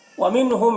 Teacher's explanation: وَمِنْهُمْ، یہاں پر دیکھیے میم ساکن کے بعد میم ہے حروف یومن میں سے، تو میم کو میم سے ملا کر غنہ کے ساتھ پڑھیں گے